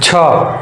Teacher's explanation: छ का उच्चारण स्थान है तालु